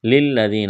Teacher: یا ساکن سے پہلے زیر ہے، یا مدہ ہے، الف کے برابر کھینچنا ہے